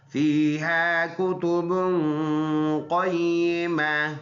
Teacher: فیہا یہ یا مدہ ہے، اس کو ایک الف کے اندازے سے لمبا کریں گے